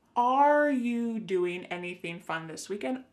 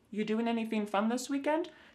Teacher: But the word are, it's on vacation. It's just gone somewhere.